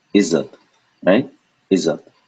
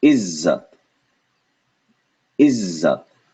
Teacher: Z, 1, 2. Twice as long as a regular z. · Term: two z's together